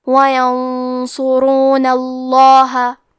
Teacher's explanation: وَيَنصُرُونَ، حرف صاد کو موٹی آواز میں پڑھنا ہے، آخری میں را پہ پیش ہے تو یہاں را کا حکم ہے تفخیم، تو ہم حرف را کو بھی موٹی آواز میں پڑھیں گے۔ آخری میں نون پہ زبر ہے لہذا ہمیں لفظ الجلالہ کے لام کو موٹی آواز میں پڑھنا ہے۔ · آخری میں نون پہ زبر ہے لہذا ہمیں لفظ الجلالہ کے لام کو موٹی آواز میں پڑھنا ہے۔ وَيَنصُرُونَ اللَّهَ، کلمت اولئک میں حرف الواو ہے لیکن ہم واو ظاہر نہیں کریں گے، الف کو پیش سے پڑھ کے حرف اللام پڑھیں گے۔